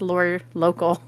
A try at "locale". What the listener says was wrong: Okay, yeah, you keep saying local, but it's not local. It's locale.